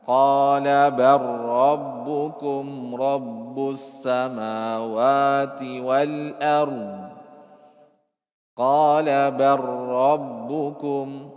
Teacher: Tapi kita sudah sebutkan ya, Syekh Hafizahullah sudah menyebutkan kaidahnya. Lam yang bertemu dengan huruf ra maka tudgham, masukkan.